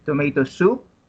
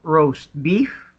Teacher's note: the stress falls on the second word on each phrase